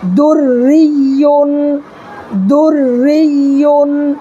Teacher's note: دیکھیے یہاں را ساکن ہے، یہ را کے نیچے زیر ہے اس لیے را کو ہم باریک پڑھیں گے